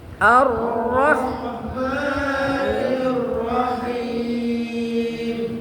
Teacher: Kalau di akhir atau di tengah kalimat maka alifnya harus ditiadakan, tidak dilafalkan ya. Ar-Rahman, ra-nya dibaca tebal sebab berharokat fathah ya.